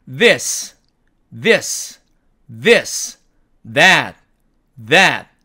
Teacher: 따라서 입모양은 를 발음할 때와 같으나 이 발음기호는요, 우리가 조금 전에 배웠던 이 번데기 같은 와는 달리 유성음이라서 발음 시에 목청이 울려야만 하고 스가 아닌 the처럼 발음을 해야 이 소리가 납니다. 우리말의 드와는 전혀 다른 음이기 때문에 조심해야 합니다.